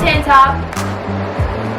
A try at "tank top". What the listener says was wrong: Yeah, it sounds like you're saying tanny top. Tank top. Tank. Tank.